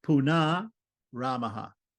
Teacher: we dropped the first R and we made the short a in punar right long